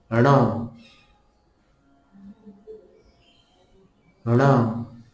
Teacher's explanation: जीभ ण बोलते समय ऊपर की तरफ जाएगी, अर्थात अपने सिर की तरफ जाएगी। इसलिए ये 9 उच्चारण मूर्धा से किए जाने वाले उच्चारण बताए गए हैं व्याकरण में।